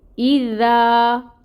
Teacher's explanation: اور ذا الف ساکن اور الف ساکن سے پہلے دال کے اوپر فتح کی حرکت الف مد کا رول ہوگا۔ ذا کو 2 کاؤنٹس کے برابر ہم لمبا کھینچیں گے۔ اذا اور دال کو نرمی سے بھی ادا کریں گے۔